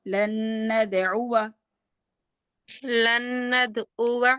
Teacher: واو الف کو لمبا نہیں کریں